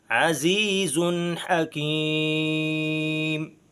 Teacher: ان اللہ عزیز حکیم، یہاں پر غنہ نہیں کریں گے کیونکہ حروف حلقیہ میں سے ایک حرف ہا آ چکا ہے، اس لیے نون تنوین پر غنہ نہیں ہوگا۔ عزیز حکیم۔